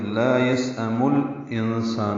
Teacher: یسأم میں سین ساکن پہ حمز ہے، یہ حمزہ یا کی شکل میں ہے، اور میم کو الانسان کے لام سے ملائیں گے